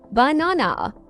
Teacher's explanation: in the word banana, the stress is on the second syllable, banana. Exactly. If you get the stress wrong, it can sound confusing to listeners. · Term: word stress